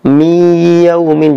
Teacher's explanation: N-nya itu masuk ke huruf idghamnya, yaitu masuk dengan didengungkan alias panjang. Akhirnya kita bunyinya seperti contoh miyaumin. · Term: idgham bi gunnah